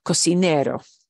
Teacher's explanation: of our C sounds I don't need an accent mark because we're punching the second to last syllable which is what we're supposed to do